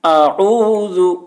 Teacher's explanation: اعوذ پہلے حمزہ کی آواز نکالنا ہے، پھر عین کی. اعوذ، ذال کو بہت ہی باریکی کے ساتھ ادا کرنا ہے.